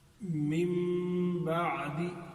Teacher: پیچھے لام اور را میں ہم نے پڑھا تھا ادغام میں کہ آواز نون کی بالکل ہی ختم ہو جائے گی اور لام اور را کی آواز آئے گی. یہاں نون کی آواز ختم ہوگی لیکن نون کی آواز ختم ہونے کے بعد میم میں تبدیل ہو جائے گی